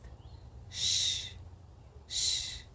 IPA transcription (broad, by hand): ʃ